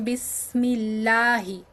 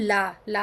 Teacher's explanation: আর যদি কাসরা থাকে যেমন বিসমিল্লাহি তখন লা লা হয়ে যায় পাতলা